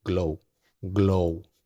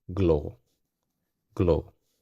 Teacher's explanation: tenemos que relajar la O y que sea más prolongada y más suave.